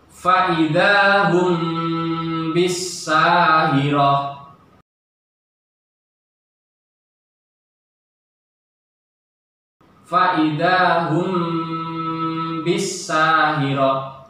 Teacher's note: ikhfa syafawi, samar-samar di bibir